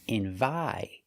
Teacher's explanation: The first syllable is not stressed, so you hear n. The second syllable is stressed.